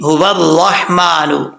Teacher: را کے اوپر زبر ہے، را پر پڑھا جائے گا. را کے بعد ہا ہے، ہا بریک ہے، اس کو بھاری ساؤنڈ کے ساتھ نہیں پڑھنا.